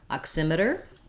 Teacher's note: the word oximeter has second syllable stress and the letter x can do a number of different things